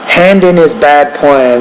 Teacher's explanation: there's not really a pause after the D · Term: blending